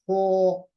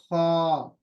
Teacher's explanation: खा कहते वक्त होंठ गोल नहीं होना चाहिए, हो नहीं, बल्कि खा।